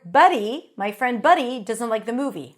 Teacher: a d between two vowels and a t between two vowels sound the same in American English